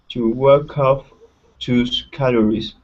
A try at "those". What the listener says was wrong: Okay, so here, instead of tus, this is those. Okay, so the th is when you pronounce you place your tongue between your teeth, and it's a voiced sound. Those.